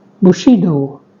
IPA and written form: bʊˈʃiːdoʊ (Bushido)